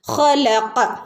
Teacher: ഖ തൊണ്ടയുടെ അക്ഷരാണ് ഖ. ഖാഫ് നാവിൻ്റെ മുരട് ഭാഗവുമാണ്.